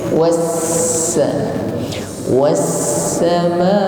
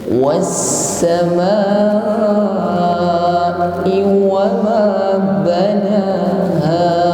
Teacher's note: Huruf ma kita panjangkan 2 ayunan atau 4 harokat. Karena di atasnya ada tanda coret panjang.